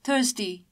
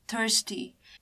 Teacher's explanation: R is silent in British pronunciation, and that's why we say thirsty in British pronunciation, whereas in American pronunciation, we can see R here, hence we call it thirsty.